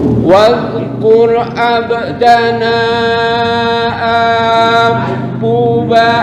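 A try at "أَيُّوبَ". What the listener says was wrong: Bukan abuba, ayyuba. Ayyub.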